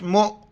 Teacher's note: میم کو حمزہ کے ساتھ ملائیں گے اور جھٹکے کے ساتھ پڑھیں گے